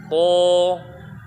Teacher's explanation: Pangkal lidahnya harus naik, jadi bunyinya tebal dia. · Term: huruf to